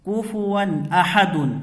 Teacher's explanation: یہاں واو کے اوپر دو زبر کی تنوین ہے، تنوین کے بعد حروف حلقی میں سے حمزہ آ رہا ہے، تو یہاں پر ظاہر کر کے بغیر گنہ کے جلد پڑھیں گے۔